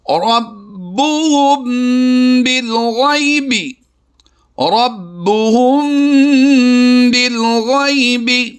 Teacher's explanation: یا ساکن سے پہلے حرف غین کے اوپر زبر ہے تو ہم نے یہاں پر بھی لمبا نہیں کرنا بلکہ یا لین کرتے ہوئے اسے پڑھنا ہے۔